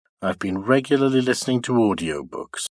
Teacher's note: the pitch movement remains steady, keeping high level, from the stress syllable of regularly to the last syllable before the nucleus, while for I've been, they are de-accented and pronounced low in pitch.